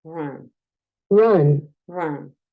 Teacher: entre una A y una O. Es un sonido schwa, es un sonido distinto.